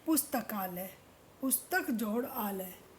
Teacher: अ और आ मिलकर परिवर्तन आता है और वो आ बन जाता है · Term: दीर्घ संधि